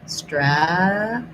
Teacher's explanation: For strategy, we have first syllable stress, black cat vowel, stra. This T we use as a flap, so it kind of sounds like a D. Strategy. This is a schwa, and this G is a J sound.